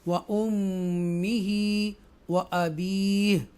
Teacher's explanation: یہاں extra stress کے ساتھ میم کے اوپر گنہ کریں گے